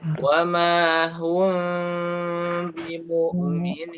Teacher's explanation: bacaan mim sukun atau mim bati bertemu ba itu adalah pertama samar-samar suaranya, kemudian ditahan selama 2 harokat.